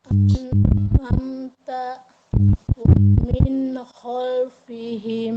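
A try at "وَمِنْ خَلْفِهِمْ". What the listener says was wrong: Lepas, Bun, waminnya holnya lepas.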